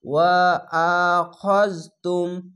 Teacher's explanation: ওয়া আখাজ, এখানে খাজ হবে না, খ জবার খ, আকার উচ্চারণ হবে না, খা হবে না, কেন? খ মোটা অক্ষর।